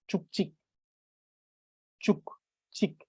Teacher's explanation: instead of this being chuchik, the sound of k adds to the end of chu, making it chuk, and this becomes chik.